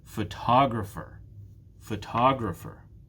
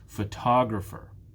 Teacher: it's the second syllable that is stressed